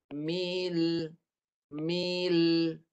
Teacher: Lam dekat ujung lidah ni naik ke gusi atas kat sini. Ini lam. Lam dekat sini. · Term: lam mati